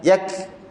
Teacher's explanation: Okay, masa kita sebut yakdzibun, kita nak angin kaf kita ni ada angin dan putus. Contoh huruf kaf ni kena ada 2. Kena ada angin dan dia kena putus. Dia tak boleh baca yakdzibun, itu tak putus langsung.